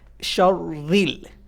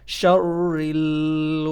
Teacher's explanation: there is kasra below the ra, so we can't make it bold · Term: light sound